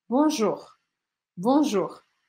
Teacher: Bonjour, com esse R arranhadinho aqui no final.